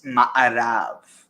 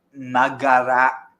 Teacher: the ayin can also be gayin, so west in Hebrew is ma'arav. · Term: consonantal shift